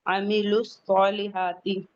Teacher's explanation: سواد پہ فتح مستقیمہ ہے، 2 کاؤنٹ پڑھیں گے